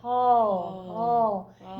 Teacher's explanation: more back in your throat the their tongue is and so this is not an awe like Father this is more of a like a back awe · You can just feel it really in the very back of your throat, that low placement. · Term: back ah